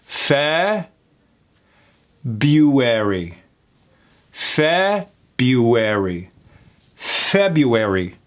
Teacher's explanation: in this particular case, that first R is not pronounced. It's not February, it's February.